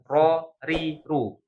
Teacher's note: Ro ini tempat keluarnya itu ujung lidah. I, tapi ujung lidahnya itu bukan persis di ujung, di punggung. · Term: huruf ro